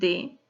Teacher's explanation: se caracteriza por ser lingua dental porque colisiona lengua y dientes